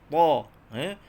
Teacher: Ta, makhrajnya hujung lidah sentuh pangkal gigi atas. Sama macam huruf dal. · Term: huruf ta